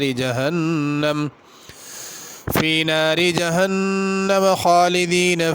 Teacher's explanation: خالدین کی خا پر کر کے پڑھی جائے گی